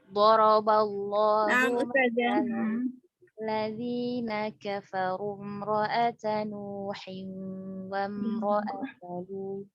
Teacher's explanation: imra'ata terbacanya hamzah wasalnya tidak terbaca ya di sini karena wasal